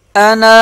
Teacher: ایک الف کے برابر کھینچ لیں گے اسے جب وقف کریں گے